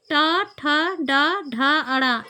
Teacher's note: इनका उच्चारण स्थान मूर्धा है और इनको टा वर्ग के अंतर्गत रखा गया है।